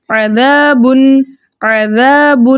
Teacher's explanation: با کے اوپر 2 پیش کی تنوین ہے، 2 پیش کی تنوین کے بعد حروف حلقی حمزہ ہا عین ہا غین خا میں سے حمزہ آ رہا ہے، تو اس لیے یہاں پر ہم 2 پیش کی تنوین میں چھپے نون ساکن کو ظاہر کر کے پڑھیں گے اس کے مخرج اور صفات کے ساتھ